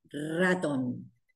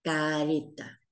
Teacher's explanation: Cómo suena esta letra cuando empezamos una palabra suena fuerte ratón en el interior suena suave